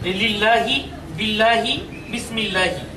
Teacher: লাম খাড়া জবর লা উচ্চারণ করাটাই হচ্ছে পাতলা করে উচ্চারণ করা তথা বারিক উচ্চারণ করা